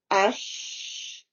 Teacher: middle part of the tongue with the opposite hard palate